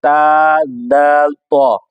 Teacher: यह अदा होते हैं जुबान की नोक और ऊपर के दांतों की जड़ से